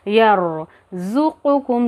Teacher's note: रॉ को थोड़ा सा मोटा पढ़ेंगे क्योंकि रॉ के ऊपर साकिन है, लेकिन उससे पहले वाले हर्फ पर ज़बर आ गया तो इसीलिए हम रॉ को मोटा पढ़ेंगे।